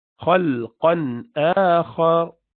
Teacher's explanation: خا is rounded as well, and ra is rounded as well, full mouthed.